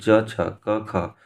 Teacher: क ख च छ अघोष वर्ण यानी पहला दूसरा अघोष